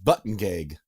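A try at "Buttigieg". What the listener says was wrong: There's no N in there that you told me.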